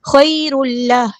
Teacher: تنوین کی آواز دیکھیں یہاں پہ اس کے بعد لام آیا تو مرج کر دیں گے لام کے اندر، ادغام بلا غنہ، اور ادغام کرتے ہوئے رکیں گے نہیں